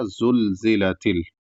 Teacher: double زا آ رہا ہے، پہلا زا پھر زا، اس لیے اس کو صاف ادا کیا جائے گا